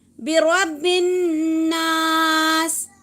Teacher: نون تشدد ہوگا تو وہاں پر غنہ کرنا ہے ہمیں